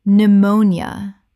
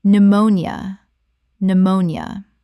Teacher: 3 syllables in natural speech. The P is completely silent and the nia collapses.